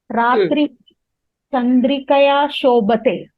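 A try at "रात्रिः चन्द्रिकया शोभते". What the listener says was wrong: Shobhate. Ratrihi Please don't forget the Visarga in Ratrihi. Chandrikaya Shobhate.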